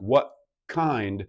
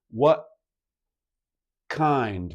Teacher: In fact, if I say a phrase like what kind, my tongue is probably not reaching for the T because it's getting ready for the K at the back